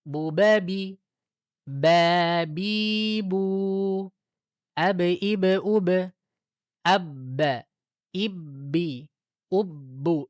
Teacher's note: Dan ingat ketika menyebutkan huruf-huruf ini pemantulannya yang ba, yang qalqalah harus cepat.